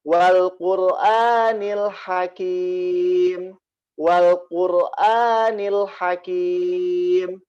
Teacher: Rohnya dia bergetar ya